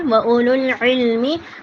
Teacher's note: عین کو حلق سے نکالیں گے